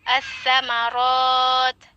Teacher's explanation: alif lam syamsiyah, di mana lamnya tidak dibaca, jadi langsung ke huruf sa yang bertasydid itu, as-samarat.